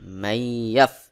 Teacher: নুন সাকিনকে বাদ দিয়ে সরাসরি ইয়াকে যুক্ত করে পড়তে হবে